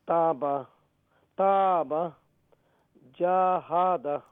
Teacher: So what you want to say, in both words, ta's going to be long, and in jahada, jim is going to be long because of alif madda.